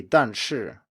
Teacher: the fall is spread out over both syllables so the first one doesn't fall all the way to the bottom and the second one sometimes doesn't start at the very top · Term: two fourth tones